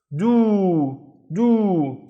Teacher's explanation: it's a long vowel and it's making the do twice as long. So, it's do.